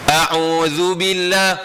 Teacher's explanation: Huruf zal ni hujung lidah dengan hujung gigi ni bersetentang.